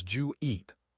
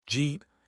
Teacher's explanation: It is the ultimate reduction. It sounds like one syllable.